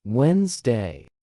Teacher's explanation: The D in the middle is completely silent.